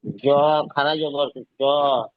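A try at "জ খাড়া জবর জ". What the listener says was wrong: টান বেশি দিতে হবে, টান কম হয়ে গিয়েছে।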